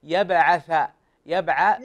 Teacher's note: ابني انتبه، شوف حرف الثاء في القرآن لازم تخرج لسانك، عود على أن تخرج لسانك، شوف يبعث، شوف اللسان يخرج بين الأسنان العليا والسفلى، بين الثنايا العليا والسفلى